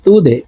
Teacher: আং তা দাল পেশ তু দে দাল কলকলার হরফ ধাক্কা দিয়ে উচ্চারণ করব। আই তু দে নিচের দিকে ধাবিত করে ধাক্কা দিয়ে উচ্চারণ করব।